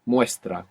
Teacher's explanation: We don't need to roll the R here because it's just one R.